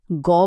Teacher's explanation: কিন্তু এবার যদি গ বলা হয় একটা হালকা বাজ বা কম্পন টার পাওয়া যাচ্ছে। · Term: ঘোষ ধ্বনি